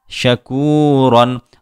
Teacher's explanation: را 2 زبر رن، شکورن۔ را کے اوپر 2 زبر ہوں تب بھی را پر ہوگی